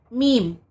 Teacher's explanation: दोनों होठों के जुड़ने से मीम अदा होता है · میم دونوں ہونٹوں کے جڑنے سے میم ادا ہوتا ہے